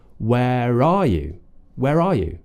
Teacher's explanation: Sometimes we can use that R as a bridge, as a connector, and if it's there in the spelling, but it's not there in the pronunciation, we can use it if the next word begins with a vowel.